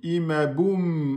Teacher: En gardant les lèvres fermées. Et on ne fait pas de qalqala. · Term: mim soukoun